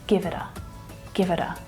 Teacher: that article, a, it's a schwa and it reduces right down